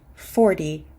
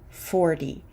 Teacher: that T is a fast D